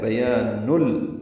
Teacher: یہ ادغام ایک کامل ہے. بیان نل، بیچ میں نون کی آواز، جو نون ساکن کی آواز ہوتی ہے وہ ختم ہو جائے گی، وہ یعنی غنہ نہیں ہوگا. بیان نل، اسی لیے اس کو بلا غنہ بھی کہتے ہیں.